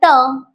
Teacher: जीभ कशी पातळ पाहिजे ती मुडपली पाहिजे मुर्धेला लागली पाहिजे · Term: मुर्धन्य वर्ण